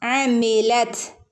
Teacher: ത് കാറ്റ് പോകുന്ന പുറത്തേക്ക് കാറ്റ് പോകുന്ന രൂപത്തിൽ ത് എന്ന് പറയണം ട്ടോ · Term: തന് സുക്കൂന്